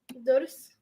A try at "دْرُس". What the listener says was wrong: No. No. There's a harak on the dal or no? There's no harak on the dal. Drus. Kind of hard to pronounce now because it's starting with a sukoon.